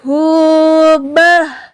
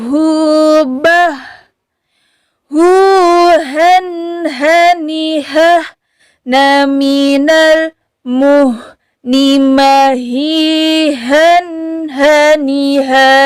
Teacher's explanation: Ha ini sifatnya yaitu rokhawah, mengalir suara kita.